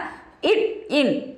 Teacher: இட் இன் ஆகிய இரு மெய்களும் நாவின் நுனி அன்னத்தின் நுனியை பொருந்துவதால் பிறக்கின்றன. இட் இன் ஆகிய இரு மெய்களும் மேல்வாய் பல்லின் அடியை நாக்கின் நுனி பொருந்துவதால் பிறக்கின்றன.